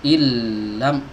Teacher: Ini asalnya dibaca in ya, tapi karena setelahnya ada huruf lam ya, maka berlaku padanya, pada bacaan ini, satu hukum yang disebut dengan idgham bila gunnah ya, idgham bila gunnah. Illam, nunnya tidak disisakan sama sekali. Jadi jangan pakai dengung, illam loh, kok pakai dengung, kan ada nun sebelumnya ya, salah.